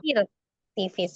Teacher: Ro sukun dibaca tipis ketika sebelumnya ada huruf berharokat kasroh. Jadi fir tipis ya.